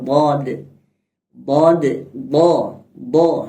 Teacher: huruf dad yang keluar di pinggir kanan kiri lidah kita